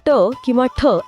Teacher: >> अच्छा >> आपण जर ट किंवा ठ असा उच्चार केला तर तुमच्या लक्षात येईल की जीभ बरोबर आतल्या बाजूने दुमडली जाते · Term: मूर्धन्य